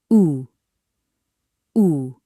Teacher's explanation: It's a tight U sound like in boom. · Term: tight oo sound